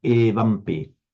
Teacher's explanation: never be shy about keeping that e deliberately long